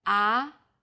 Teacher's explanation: the second tone starts with a middle pitch then rises quickly